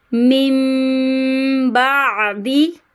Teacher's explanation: نون ساکن کے بعد با آ رہا ہے تو یہاں پہ اقلاب کا گننا ہو رہا ہے, ہم اس کو میم سے بدل کے پڑھیں گے. من نہیں پڑھنا, یہاں پہ آپ کو میم کے ساتھ ملا کے پڑھنا ہے.